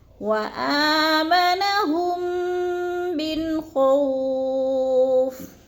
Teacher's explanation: جیسے وآمنہم من خوف، اب من پہ جو ہے نون ساکن کے بعد خو آ گیا تو ادھر کیا ہو رہا ہے اظہار، ہم نے اخفا نہیں کرنا، آواز کو ناک میں نہیں چھپانا بلکہ ظاہر کر کے لفظ کو پڑھنا ہے. وآمنہم من خوف، خو کو لمبا نہیں کرنا، ادھر وہ لین ہے، وہ ساکن سے پہلے خو کے اوپر زبر ہے تو وہ لین کو لمبا بھی نہیں کرنا اور جھٹکا بھی نہیں دینا.